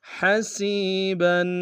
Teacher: علی کل شیء حسیبا، حسیبا میں سین کو یا کے سامنے گے، یا مدہ ایک انداز میں کھینچیں گے، با کے اوپر تنوین غنہ کریں گے